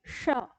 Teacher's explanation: हमको जीभ को बिल्कुल उसी तरह से मोड़ना है जैसे हम ट ठ ड में मोड़ते हैं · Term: मूर्धा